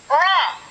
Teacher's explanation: berikut Arahkan pena pada huruf ro ro cara pengucapan ro adalah suara keluar dari pertemuan antara ujung lidah dan langit-langit bagian depan yang disertai dengan satu kali getaran halus ujung lidah